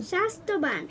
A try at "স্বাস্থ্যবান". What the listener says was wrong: স্বাস্থ্য, ত না থ।